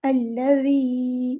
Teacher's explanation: زال میں سختی نہیں لانی، الذی اس طرح نرمی سے پڑھنا ہے